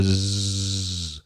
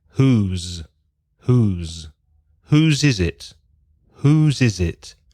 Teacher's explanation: And one thing about the pronunciation, there's an S in both words, WHOSE or WHO''S, but it's not a s sound. The sound is with vibration, vibración, in the throat, in la garganta. So you can feel your vocal cords vibrating like a zzz.